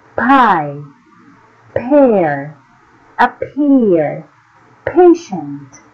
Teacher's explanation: beginning of a stressed syllable is pronounced with the aspirated allophone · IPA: /p/